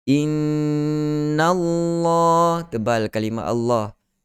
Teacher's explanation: Okey. Innallah, tebal kalimah Allah, lafzul jalalah, kerana nun sebelum dia berbaris di atas